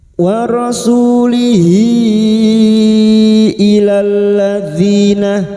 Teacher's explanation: damir yang berharakat panjang dan bertemu hamzah mad silat thwilah lima harakat